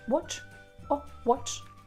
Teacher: British people will say more like O sound